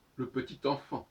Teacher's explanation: Quand je dis le petit enfant, on entend le T de petit enfant. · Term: liaisons